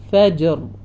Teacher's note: കൽക്കല വന്നിട്ടുണ്ട് അതും മറക്കരുത് ഫജ് ഫജ് ആ സൗണ്ട് വരണം മുഴപ്പിച്ചുകൊണ്ട്തന്നെ പറയാം ഫജർ നിർത്തുമ്പോൾ റ ഹെവിയാക്കികൊണ്ട്തന്നെ തന്നെ നിർത്താം